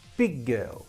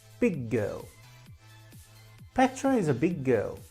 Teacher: only pronounce one of those g's